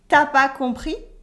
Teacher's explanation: And the voice goes a little bit up because it's a question. T'as pas compris?